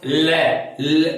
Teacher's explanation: ल का उच्चारण करके देखिए आप, ल, तो जिह्वा का अग्रभाग ऊपर दांतों से नीचे की तरफ टच हो जाएगा, स्पर्श कर लेगा और जिह्वा प्राणवायु के निकलने के मार्ग को अवरुद्ध कर देगी। तब प्राणवायु को दोनों तरफ से निकलना पड़ेगा, जीभ के दोनों तरफ से। इस वजह से इस वर्ण का नाम पार्श्विक वर्ण है।